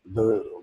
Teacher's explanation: when I say the, my vocal cords vibrate. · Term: voiced sounds